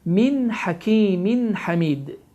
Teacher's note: izhar qaydası baş verir ki, burada n səsi açıq-aşkar şəkildə oxunmalıdır